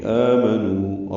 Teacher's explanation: للذین، الذین تیسری مرتبہ آ رہا ہے یہ سائد میں. آمنو، آ مد بدل ہے اور نو واو مدہ ہے، 2 حرکات لمبا کریں گے، آ کو بھی اور 2 حرکات نو کو بھی.